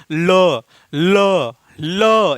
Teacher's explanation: जैसे आप लोग उच्चारित कीजिए ल ल ल, यानी जब आप ल का उच्चारण कर रहे हैं तो हवा आपके जिह्वा का अगला हिस्सा आपके मसूड़े को टच कर रहा है और हवा दोनों तरफ से, यानी जीभ के दोनों तरफ से निकल रही है। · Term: पार्श्विक व्यंजन